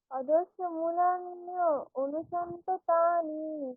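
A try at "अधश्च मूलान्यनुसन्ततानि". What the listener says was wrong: না না না, মূল আপনাকে ভাঙতে হবে না কোথাও, একসঙ্গে অধশ্চ মূলা আকারে অনেকক্ষণ টেনে নেবেন। অধশ্চ মূলান্যনুসন্ততানি, বলুন আবার।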